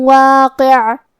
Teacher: ہم کلمت واقع پہ رکیں گے تو عین پہ جزم سے رکیں گے، لہذا ہمیں عین کو ظاہر کرنا ہے